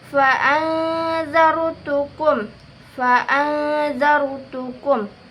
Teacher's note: Kemudian terdapat di dalam ayat ke-14 yang berbunyi fa'anzarutukum. Nun sukun bertemu dengan za. Hukumnya ikhfa hakiki yang dibaca samar-samar.